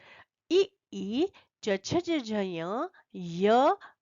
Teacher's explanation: इन वर्णों का उच्चारण स्थान तालू है इसलिए इन्हें कहते हैं तालव्य वर्ण